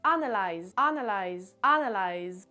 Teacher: l'accentuation se fait sur la première syllabe, sur le A, et tout le reste ce sont des syllabes qu'on entend un petit peu moins